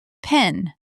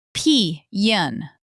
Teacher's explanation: The Southern drawl is famous for turning one-syllable words into two syllables. · The word pen, in Standard American English, it's just pen. Quick, short. In the Southern drawl, it becomes pee-yan. Two syllables.